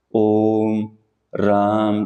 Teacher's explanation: प्लुत स्वर होता है जी जिसमें कि ह्रस्व स्वर का तिगुना और दीर्घ स्वर का दुगना समय लग गया